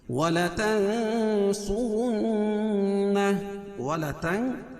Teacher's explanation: نون ساکن کے بعد حروف اخفا کے 15 حرفوں میں سے صاد ہے، تو یہ ناک میں آواز کو چھپا کر پڑھیں گے. تنصرن، صاد اور را دونوں پر پڑھیں گے اور نون مشدد میں غنہ ہوگا، اور وقف کی صورت میں الٹا پیش کو ہائے ساکنہ سے بدل دیں گے. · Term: اخفا حقیقی